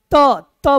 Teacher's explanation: दांत से होता है तो आप त त बोलते हैं तो हमारा जीभ दांत में टच करता है तब जाकर तो हम त बोल पाते हैं बिना जीभ को दांत में सटाए हुए त